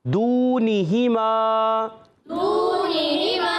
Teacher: شروع میں واو مدہ ہے، کھینچیں گے. پھر نون اور ہا کی زیروں کو نہیں کھینچیں گے. پھر میم الف زر ما، یہ کھینچیں گے.